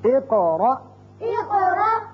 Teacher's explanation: دونوں قاف جگہ پر قلقلے ہیں، دونوں جگہ ہم نے قاف کی 2 آوازیں نکالی